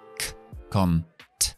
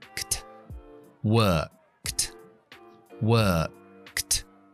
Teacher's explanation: Tengo que unir K con T. La T también es sorda.